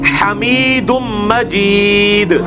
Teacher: دال پہ قلقلہ بھی ہوگا